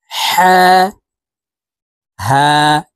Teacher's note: এই হা হলুকের শুরু থেকে উচ্চারণ করতে হবে